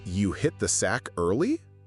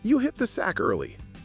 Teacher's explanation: if you say you hit the sack early with rising intonation it sounds like a question. But if you say you hit the sack early with falling intonation it sounds like a fact.